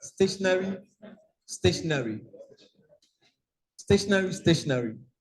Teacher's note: Well, if you check the dictionary, it will be the same pronunciation. Because usually the last part, which is not stressed, carries what we call the schwa vowel